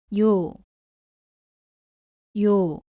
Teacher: 요는 위에서 아래로 2번 쓰고 왼쪽에서 오른쪽으로 씁니다. 발음은 이로 시작해서 빠르게 오로 이어서 발음합니다